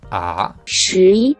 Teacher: El segundo tono es básicamente el mismo tono que ocupamos en español para hacer una pregunta.